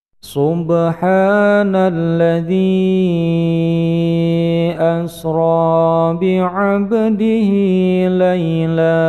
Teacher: Ada bacaan qalqalah sughra, yaitu huruf ba yang disukun di tengah-tengah bacaan sehingga memantul kecil